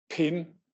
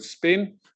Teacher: Okay, no puff of air. So the first one we call an aspirated P, which we write in linguistics as a P with a little H above it, and the second is an unaspirated P.